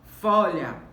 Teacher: Folha, temos como sílaba mais forte fó. Folha. Então, é uma palavra paroxítona.